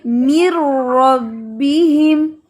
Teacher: جلدی سے نون کو را میں مرج کریں، جلدی سے، گیپ نہیں آنا چاہیے